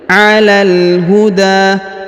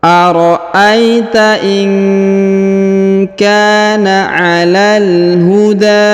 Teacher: huruf da dipanjangkan 2 harokat ya, dipanjangkan 2 harokat